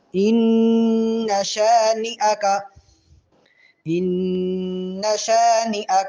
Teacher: غنہ تو کریں گے لیکن نون کو لمبا نہیں کریں گے